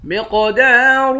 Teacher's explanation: قاف کو موٹا بھی پڑھیں گے، قلقلہ بھی کریں گے